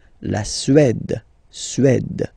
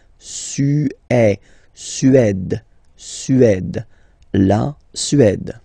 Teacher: Remember, accent grave, it's really open.